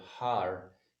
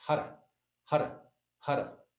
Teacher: the tongue hits the top of the mouth on the R. So instead of Har, it's Hara, Hara, Hara, like that.